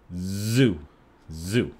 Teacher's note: But if you say Z-O-O, zoo, zoo, you feel that there is vibration.